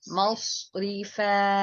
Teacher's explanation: جب مصرفا صوت کو آپ باریک کریں گے تو سین بن جائے گا، پر کر کے پڑھیں گے تو یہ صوت بنے گا